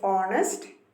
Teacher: the letter h is silent so the word honest begins with the o sound